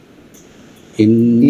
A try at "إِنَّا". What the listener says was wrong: জি টান হয় না, দেখছেন আপনি, এর জন্য শেষ হয়ে যায় আগেই।